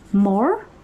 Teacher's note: It is not mortgage, because it's not like Mort, the guy is trying to gauge something. It actually happens to be mortgage, wherein the T is silent.